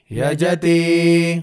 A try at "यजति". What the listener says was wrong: ఇక్కడ కూడా మనం యజతి చెప్పినప్పుడు తీకి మనం దీర్ఘం పెట్టకుండా యజతి